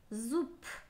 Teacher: звонкие согласные на конце слова и иногда в середине слова имеют такое свойство, они становятся глухими